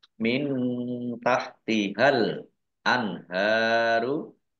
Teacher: nun sukun bertemu dengan huruf ta, bacaan ikhfa dibaca samar-samar. Al anharu alif lam komariah, ditandai lamnya dibaca sukun.